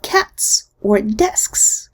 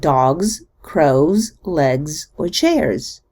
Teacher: But we don't say Z for all plurals. Notice that we pronounce S at the end of cats or desks, and Z at the end of dogs, crows, legs, or chairs. The final Z completely loses its voicing when it comes after a voiceless consonant.